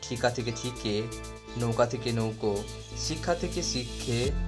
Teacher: পূর্ববর্তী স্বরধ্বনির প্রভাবে পরবর্তী স্বর পরিবর্তিত হয়ে একই রকম বা কাছাকাছি ধ্বনিতে রূপান্তরিত হয়। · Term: প্রগত স্বরসঙ্গতি